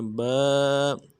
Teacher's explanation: با کے ساتھ الف مدہ ہے، ایک الف دال میں کھینچیں گے